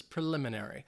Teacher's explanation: The stress is on that second syllable, but it's not a very strong emphasis.